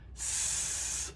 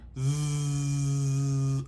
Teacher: s an unvoiced sound and z a voice sound